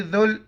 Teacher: ज़ाल के वक्त ज़ुबान बाहर निकालेंगे